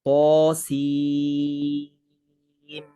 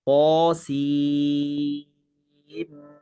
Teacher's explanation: nun dengan mim ada idgham dengung 2 harakat, mim pula mad lazim harfi mukhaffaf 6 harakat. · Sin dengan mim tu sim. Tinggikan sikit intonasi suara untuk nak menunjukkan di sini ada sabdu, dan itulah namanya mad lazim harfi musaqqal.